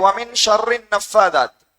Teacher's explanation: சுக்குன் செய்யப்பட்ட நூனை தொடர்ந்து ஷீன் வருது. அந்த இடத்திலும் நாங்கள் 2 ஹரக்கத் அளவுக்கு ராகம் எடுக்க வேண்டும். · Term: இக்ஃபாவுடைய சட்டம்